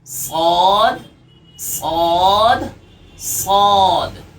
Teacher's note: सौद, होंठ गोल ना हो इसका ख्याल रखा जाए। · बस ये कि आपको इसकी आवाज़ निकालने के बाद में आपको ज़बान को तालु की तरफ उठाना होगा, क्योंकि ये मोटा हर्फ है। हरूफ मुस्तालिया में से दूसरा हर्फ है।